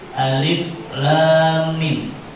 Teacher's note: Mimnya dibaca. Panjang tiga alif atau enam harakat dinamakan mad lazim harfi mukhafaf. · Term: mad lazim harfi muqaffaf